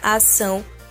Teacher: Por exemplo, o tio está em cima da letra A na palavra ação, e quando pronunciamos a palavra ação, o som sai ao mesmo tempo pelo nosso nariz e pela nossa boca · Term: som nasal